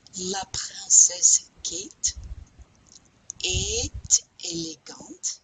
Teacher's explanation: We pronounce the T on A-E-S-T because we're starting with a vowel here.